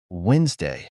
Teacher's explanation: in some other words like Wednesday the letter D is written but not pronounced